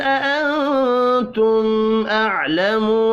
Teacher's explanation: میم ساکن کے بعد حمزہ ہے, اظہار شفی ہوگا, غنہ نہیں ہوگا